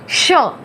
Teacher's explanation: आपके तालू से हवा निकल के आपके दांत को पास करके बाहर आएगी और ऊष्मा जो होगी वो श थोड़ी गर्म होगी।